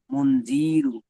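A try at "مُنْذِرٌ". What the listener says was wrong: জি টান হয়ে যাচ্ছে, জালের নিচে জের। মুন জিরু, মুন জিরু।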